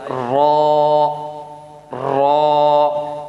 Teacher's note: را ہمارا ادا ہوگا کہ زبان اوپر تالو کے ساتھ اس طرح تھرتھرائے گی